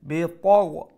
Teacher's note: ط full mouth letter, غين full mouth letter